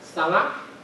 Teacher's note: you have the word for sama, which has a low-high tonal pattern. But when you have it in nsama, the low-high tonal pattern changes so that you have the low-low pattern.